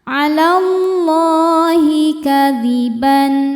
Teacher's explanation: Karena alif lam ketemu huruf syamsiyah yaitu lam dibacanya lebur atau masuk. Lahi madnya ini mad thobi'i muqaddar karena ada baris fathah panjang di atas huruf lam. Bacanya panjang dua harakat.